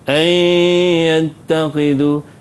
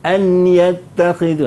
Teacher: Idgham ni dia masukkan huruf yang pertama tu ke dalam huruf yang kedua. Jadi nun tak bunyi lagi lah. Jadi kadang-kadang silapnya kita baca an yattakhidhu. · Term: idgham ma'al gunnah